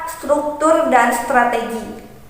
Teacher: Dalam munculnya gugus konsoid STR, terjadi persenyawaan dari tiga dasar pengucapan konsoid tersebut, yaitu dari apiko-alveolar desis tidak bersuara berpindah kepada apiko-alveolar tidak bersuara, kemudian berpindah pula pada apiko-alveolar getar. Perpindahan dalam tiga dasar pengucapan ini dilakukan dalam tempo pengucapan yang sangat cepat.